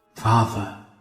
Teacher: That is a lovely non-rhotic accent we've got there.